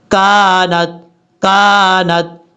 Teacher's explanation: کاف بریک ہے، بعض اوقات لوگ پڑھتے ہیں کونت، ایسا نہیں پڑھنا